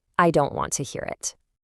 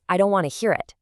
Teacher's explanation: When a native speaker says it fast, it magically becomes I don't want to hear it. The crisp T sounds in the words don't, want, and to are literally just completely dropped. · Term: reduction